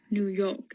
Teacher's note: the classic new york accent where the r is dropped after vowels